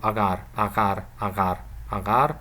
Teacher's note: I think this a is a little bit longer than the short a in the first syllable, but not of course not as long as a long a would sound in the first syllable